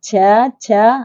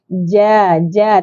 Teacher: Tengah lidah diangkat ditekan ke tengah langit tu